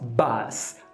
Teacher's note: na hora de falar ônibus eu relaxo mais os meus lábios, então a gente abandona o arredondamento.